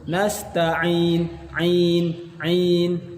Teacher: keluar dari tengah tenggorokan dan murni keluar dari mulut, tidak keluar dari rongga hidung. Nasta'in, ain, ain, walaupun ditutup tetap keluar.